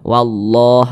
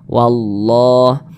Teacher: Lafaz Allah dibaca tebal, dibaca tabkhim.